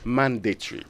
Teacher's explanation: the stress is on uh the first syllable